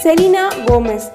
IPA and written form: səˈliːnə ˈɡoʊmɛz (Selena Gomez)